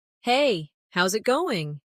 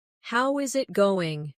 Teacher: The is disappears and the final G in going often softens. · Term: connected speech